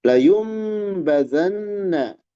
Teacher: iqlab nun menghadapi ba dirubah menjadi mim